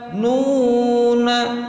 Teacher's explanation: Dhamma bertemu dengan wawu sukun, panjang 2 harokat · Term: mad tabi'i